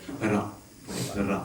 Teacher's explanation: It's further forward, it's slightly rolled. Ra, ra sound.